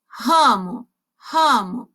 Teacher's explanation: o som nasal eu também, além de utilizar a boca, eu vou utilizar o nariz